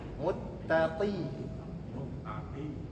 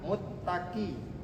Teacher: Qf dengan kaf sama makhrajnya. Pangkal pangkal lidah. Tetapi huruf qf dia lebih dalam lagi.